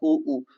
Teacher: उ ऊ ओष्ठ से बोला जाता है